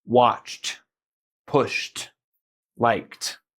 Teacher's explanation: we're not going to suddenly start using our vocal cords and throat. We're just going to add a simple T sound on the end.